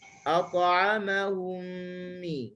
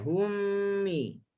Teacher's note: Dia huruf mim ni adalah huruf tawassut. Pertemuan bibir atas dengan bibir bawah dia tak kuat.